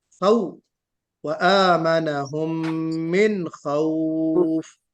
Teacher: واو یہاں پہ لین کا ہے، اور لین کو مجہول نہیں پڑھنا چاہیے، خوف نہیں بلکہ خوف پڑھنا چاہیے.